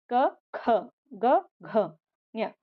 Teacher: ಇವೆಲ್ಲನು ಕೂಡ ನಮಗೆ throat section ಅಂದ್ರೆ ಗಂಟಲಿನ ಭಾಗದಿಂದ ಉಚ್ಚಾರಣೆ ಮಾಡಿದ್ವಿ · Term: ಕ ವರ್ಗ